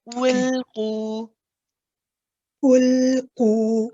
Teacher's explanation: when you get to the lam, your lips come out a little bit. Okay, and that gives you space on the side for the sound to come out. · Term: inhiraf of the lam